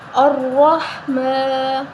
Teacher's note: میم کے اوپر کھڑی زبر ہے تو اس کو 1 الف کے برابر لمبا کریں گے